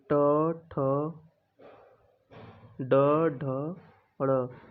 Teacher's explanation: इसमें जीभ ऊपर जाके मुड़ती है, इसलिए इनको मूर्धा व्यंजन बोलते हैं।